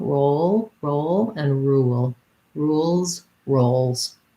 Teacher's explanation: Rules, we just have the U, tense U sound. Roles, we have the O diphthong. So both of them are long.